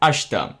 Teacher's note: it's actually written as ashita or something but it's actually pronounced as ashta